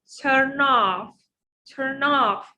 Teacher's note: So I will move the last sound of the first word to the second word. So it will be turn off, turn off. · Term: consonant vowel linking